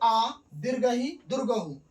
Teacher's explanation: दीर्घ स्वर को क्या कहा जाता है? द्विमात्रिक शब्द। क्योंकि इसमें दो मात्रा का समय लगता है।